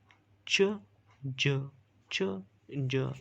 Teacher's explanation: अच्छा, फिर इसके बाद हमारे पास जो है तो एफ्रिकेट है। अब एफ्रिकेट जो है तो ये हमारे पास स्टॉप प्लस फ्राइकेटिव, इन दोनों का जो है तो कॉम्बिनेशन है। The air is stopped in release through a narrow gap, तो ये हमारे पास जो है तो इन दोनों साउंड की तरह जो है तो इनकी कॉम्बिनेशन से ये बनता है।